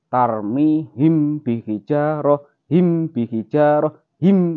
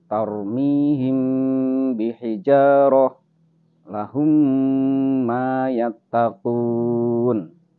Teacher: mim sukun yang bertemu mim dan mim sukun yang bertemu ba, ini sama-sama berdengung. Sama-sama berdengung, tidak boleh dibaca jelas.